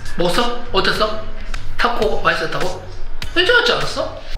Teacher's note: He's asking short questions, so they go up.